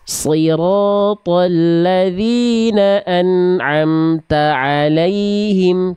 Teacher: Jangan ta'alaihim, tapi ta'alaihim. Tak dulu tuntaskan baru masuk ke ain.